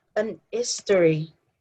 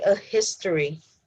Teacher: in some parts of english speaking areas people say an history so they don't say a history because they don't pronounce the h